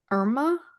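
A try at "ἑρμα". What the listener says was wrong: Yeah, Herma. we have the rough. Yeah, we've got the rough breathing, which adds the H to it.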